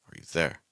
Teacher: you is just so fast and so weak